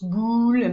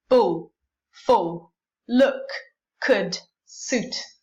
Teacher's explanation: just make sure you don't make a kiss, you don't produce your labialization there